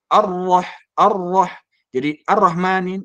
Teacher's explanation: rnya tidak ditahan tidak ditasidkan tidak digetarkan